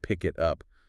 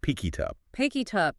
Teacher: the K sound from pick links to it, and the T sound from it links to up. It becomes one smooth sound unit.